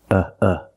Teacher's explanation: the first syllable is a short u like cup and up uh uh make a relaxed sound